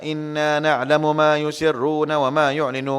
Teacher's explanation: Wa pun lembutkan, jangan wo.